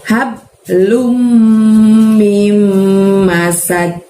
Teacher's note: Masadin, tapi karena dinnya di ujung ayat harus kita sukunkan, harus kita baca wakofnya disukun. Nah, dal sukun juga harus dimantulkan pelafalannya ya, cara membacanya ya. Jadi bukan masad tapi masad gitu, ada mantulnya.